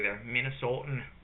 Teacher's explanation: in Minnesota, they'll actually like really flatten vowels down